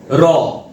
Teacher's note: এই যে র ধ্বনিটা যখন উচ্চারণ করছি তখন আমাদের জীবের অগ্রভাগ তিরতির টিপতির করে কাপে। র এই না কম্পনটা হলে র কিন্তু উচ্চারণ হবে না। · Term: কম্পিত ধ্বনি